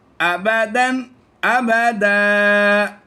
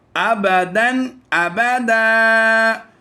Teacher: یہاں پر دونوں ہی سیم الفاظ ہیں، ابدن ابدن، لیکن ہم یہاں پر عمومی طور پر سٹاپ کرتے ہیں، وقف کرتے ہیں، تو دو زبر کی تنوین کو الف مدہ سے کنورٹ کر دیتے ہیں، یعنی ایک زبر پڑھیں گے اور ایک کو چھوڑ دیں گے تو یہاں پر الف مدہ کی کنڈیشن آ جائے گی.